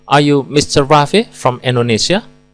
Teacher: Rafi dan Indonesia dilafalkan dengan nada naik.